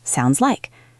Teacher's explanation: The S in sounds connects to like.